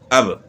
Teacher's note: حمزہ جھٹکے کے ساتھ پڑھا جاتا ہے. الف جو ہے وہ بالکل خالی ہوتا ہے، نہ اوپر نہ نیچے کچھ نہیں ہے.